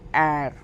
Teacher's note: R is glutal, which made at the back of the throat. Not so in English language we say it R, but in French language air, we call it air, like a gargling sound.